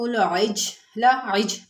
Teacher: انفسکم باتخاذکم العجل، عج میں جیم ساکن ہے اور جب جیم ساکن ہو تو وہاں پر کلکلہ کرتے ہیں